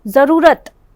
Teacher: जरूरत, जरूरत नहीं, ज़रूरत, रू के ऊपर जो है वो ज़्यादा जोर पड़ रहा है